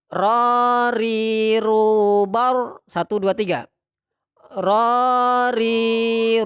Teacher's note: nafas tertahan ya Ada sifat tawasuth efisol istifal infitah dan Islam tempat keluarnya dari mana yaitu ujung lidah bagian punggung dengan langit-langit